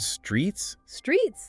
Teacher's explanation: that TS sound at the end distinguishes it from street, right? Small detail, but big difference.